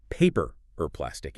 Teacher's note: Because of connected speech, the words blur together. The or gets reduced to a tiny sound. It sounds like paper or plastic.